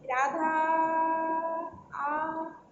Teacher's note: 3 मात्रा का समय लगा तो यह कहते हैं प्लुत स्वर